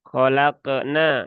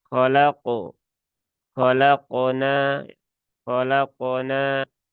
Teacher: Kemudian qalqalah huruf qof ini kan qof termasuk huruf ist'la maka qalqalahnya pun juga qalqalah tebal. Jadi bukan khalaqna ya tetapi khalaq khalaqna khalaqonna.